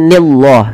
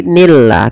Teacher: Dan lafal Allah di sini dibaca dengan lam tarqiq. Bukan dibaca dengan nillah, tapi nillah.